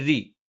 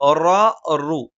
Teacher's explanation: റ റു ഈ രണ്ടക്ഷരങ്ങൾ ഉച്ചരിക്കുമ്പോൾ നാവിന്റെ മധ്യഭാഗം മുകളിലേക്ക് ഉയരുന്നത് കൊണ്ട് തന്നെ ശബ്ദം കനപ്പിച്ചാണ് നമ്മൾ ഉച്ചരിക്കുന്നത്.